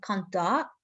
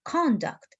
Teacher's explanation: if we put the stress for the first syllable of the word conduct it's a noun form and if we put the stress mark for the second syllable it's the verb form of this word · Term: stress interchange